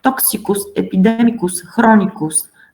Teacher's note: we put the accent on the third syllable in these suffixes